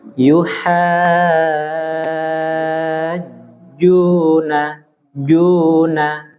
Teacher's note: huruf jim usahakan jangan mendesis